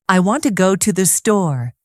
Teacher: The strong words are want and store. The small words to and the are soft and quick.